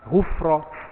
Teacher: Kalau fa mati, sebut jelas. Ghufra, bunyi fa, bunyi angin, hamas